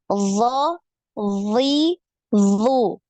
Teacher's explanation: ketika pengucapan huruf d keempat sifatnya ini harus ter terpenuhi ya Ada sifat istila ada sifat itbaq kemudian nafasnya tertahan suaranya ngalir